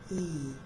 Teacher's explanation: the tongue is high at the front, for example, like E. Are the lips spread? Is it quite a tense, long sound?